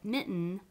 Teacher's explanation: it becomes a syllable in itself and because it's syllabized you put the diacritic mark under the n